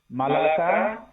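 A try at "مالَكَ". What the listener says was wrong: মালাকা, মা একটু টান আছে, মালাকা।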